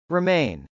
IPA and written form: rɪmˈeɪn (remain)